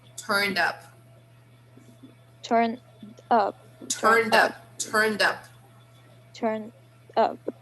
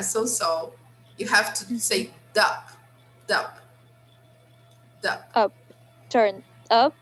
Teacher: You have to link the consonant sound to the vowel sound of the word that comes next.